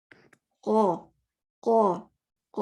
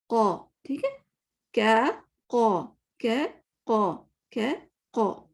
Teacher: और देखें आपकी जबान पीछे सॉफ्ट हिस्से पे लग रही है कि नहीं, पीछे नरम हिस्से पे। अगर किसकी नहीं भी लगती तो एटलीस्ट वो जो कौवा होता है ना, कौवा जो हमारे मुंह के अंदर, उसको टच होना चाहिए।